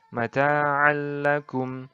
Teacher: membahas tentang idgham bilagunnah Apa itu idgham bilagunnah idgam bilagunnah adalah memasukkan atau meleburkan nun mati dan tanwin tanpa disertai dengan dengung huruf idgam bilagunnah ini ada dua yaitu lam dan rok ini